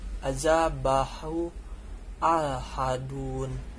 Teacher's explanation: Maksudnya adalah mat yang terjadi apabila setelah hadamir terdapat huruf hamzah berharokat. Cara membacanya ialah dibaca dengan 4 harokat. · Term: mat silah tawilah